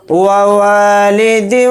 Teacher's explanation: واو کو جلدی پڑھیں گے، واو کے ساتھ الف مدہ ہے، واو الف زبر وا کو تھوڑا کھینچ کر پڑھیں گے، ایک الف کی مقدار